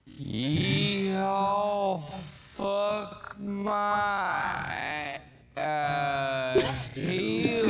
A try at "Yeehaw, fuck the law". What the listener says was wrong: Yeah, because you're saying ass. There ain't no A. No, that's ASS.